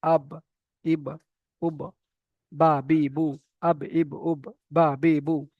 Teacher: বা কোথা থেকে উচ্চারিত হয়? দুই ঠোঁটের ভিজে অংশ মিলিত হয়ে বা উচ্চারিত হয় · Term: বায়ের মাখরাজ